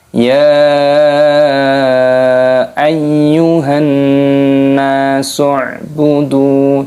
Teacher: di sini ada nun tasydid, ini maknanya gunnah berdengung. Jangan lupa ada tambahan alifnya sehingga dipanjangkan pada huruf nunnya.